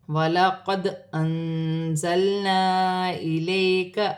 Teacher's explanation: دال ساکن ہے، قلقلے والا حرف ہے، قلقلے کے ساتھ ادا کیا جائے گا